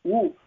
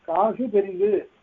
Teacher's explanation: ஊ தனியாக சொல்லுகிறபோது அதற்கு ஒரு மாத்திரை அடுத்தது காசு பெரிது என்று சொல்லுகிறபோது அரை மாத்திரை